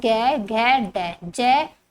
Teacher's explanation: जिन व्यंजनों के उच्चारण में स्वर तंत्रियों में कंपन हो वह घोष व्यंजन कहलाते हैं।